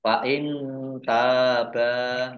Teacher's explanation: nun sukun bertemu dengan huruf ta, bacaan ikhfa dibaca samar-samar.